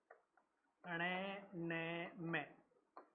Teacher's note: नासिका से। इनका उच्चारण करने के लिए नाक की आवश्यकता होती है। नाक को दबा के इनका उच्चारण हम नहीं कर सकते।